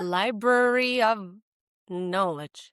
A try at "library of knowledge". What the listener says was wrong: Beautiful. Beautiful.